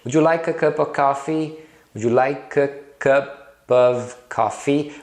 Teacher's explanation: O of, né, o of, às vezes aparece só como um a.